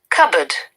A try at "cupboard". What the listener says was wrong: Cupboard. Cupboard. Not R. We don't use. Generally, American people use R. But English, sorry, Britain.